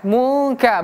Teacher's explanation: Hukum ikhfa. Artinya dia dibaca samar-samar tidak jelas.